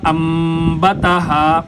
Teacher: نون ساکن کے بعد با آ جائے تو پھر وہاں پر نون کو چھوڑ کر میم کو ادا کیا جاتا ہے۔ یہاں پر اقلاب والا قاعدہ چلتا ہے، یعنی نون کو میم سے تبدیل کر کے پڑھیں گے۔